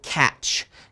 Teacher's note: that short vowel sound as an ah